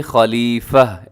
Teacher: وقف کریں گے تو تا کو ہا سے بدل کے خلیفہ ایسے ہو جائے گا